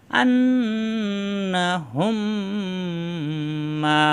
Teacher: এই মিম সাকিনের পরের মিমে তাজদিদ ধরে গুণ করে মিলিয়ে পড়ব। আন না হুম, এই হুম, এই যে হুম মিম, এই মিম সাকিন, এই মিম সাকিন এখন আর পড়া যাবে না, এই হুম মিলবে এই মিমের সাথে, হুম, তারপরে গুন্না, হুম মিম মিলবে যাবো মা, আন্না হুম মা। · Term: মিম সাকিনের ঈদগম